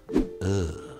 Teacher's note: And the almighty schwa. Well, that's smack dab in the middle, the most neutral mouth and tongue position, the chillest vowel sound of them all